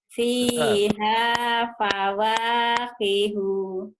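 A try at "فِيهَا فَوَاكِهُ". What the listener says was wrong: Pendek kunya.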